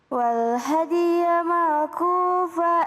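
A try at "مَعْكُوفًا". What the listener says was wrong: Ma'kufan, awas ada izhar. Ini hati-hati. Nih ada tanwin, bukan ma'kufa, ma'kufan.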